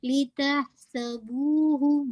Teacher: بو کو آپ نے انشاءاللہ ٹو کاؤنٹ پڑھنا ہے اور ہو کو واضح کرنا, لیکن ہو جو ہے ایک کاؤنٹ